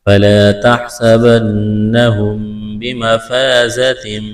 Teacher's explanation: میم ساکن ہے، اس کے بعد با ہے، تو یہاں پر آواز ناک میں چھپائیں گے، غنہ کریں گے۔